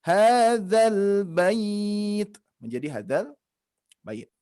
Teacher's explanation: Nah, akan tetapi ketika bertemu sukun di dalam 2 kata ini bertemu sukun, maka dari itu mad ini akan menjadi hilang, tidak dibaca.